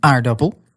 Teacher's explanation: You stress the first syllable, as in aardappel, unless there's a prefix like ge or ont or ver.